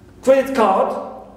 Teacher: Credit card, we stress credit always the first element in this compound noun. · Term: primary stress